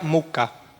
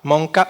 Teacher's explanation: nasalized sound is u in Lower Sorbian, like in most of the Slavic languages in this position, which evolved into a nasal sound in Polish